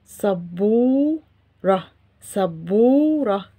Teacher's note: so we write شدة yes above باء and ضمة above this شدة because واو here is a long vowel sound like the sound O in English. we don't write any symbols above or under واو.